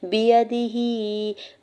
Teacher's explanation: ہا کے نیچے کھڑی زیر ہے، دو حرکت کھینچ کے ادا کریں گے